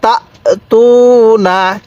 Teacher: পেশের পরে ওয়াও সাকিন থাকলে সেখানে আমাদের এক আলিফ টানতে হবে।